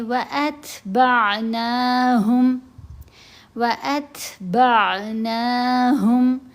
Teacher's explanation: تا ساکن ہے تو تا حروف ہمس میں سے ہے، یہاں ہم نے تا کی آواز کو کمزور کرنا ہے، ات کی آواز بنے گی، ات نہیں پڑھیں گے۔